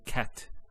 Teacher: notice there's actually a stop on the letter T so we say cat so the T doesn't have any vow · So the T doesn't have any vowel associated with it. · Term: sukoon